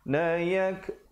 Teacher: ada kaf, bila tanda mati ada bunyi anginnya